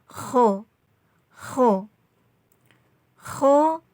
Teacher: ada huruf How pengucapannya ini ngorok ho ho ho khan ya cara mengucapkannya itu agak ngorok